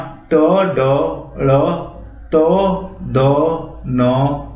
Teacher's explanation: जिन वर्णों के उच्चारण में वायु की मात्रा कम होती है वे अल्प प्राण कहलाते हैं। यानी जो जब हम बोलते हैं तो हमारे मुंह से निकलते समय वायु की जो मात्रा है वो कम होती है, उन्हें अल्प प्राण कहते हैं।